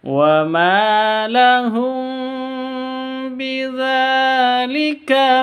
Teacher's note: mim sukun atau mim mati bertemu dengan ba cara bacanya samar disertai dengung karena Ikhfa Syafawi